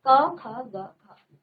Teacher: क वर्ग का उच्चारण हमारे कंठ से होता है